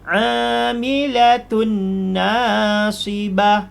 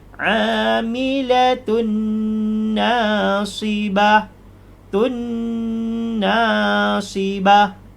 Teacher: idgham maal ghunnah masuk dengan dengung · jadi dia tidak ada perubahan bunyi cuma dia ditahan karena masuk kepada huruf nun